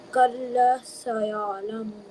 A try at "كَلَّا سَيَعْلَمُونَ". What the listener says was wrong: What about alif madda? If a letter has a fatha on it and the next letter is alif, we stretch the letter for 1 second. That's called alif madda. So it's not kalla. It's kalla. Stretch it. Kalla.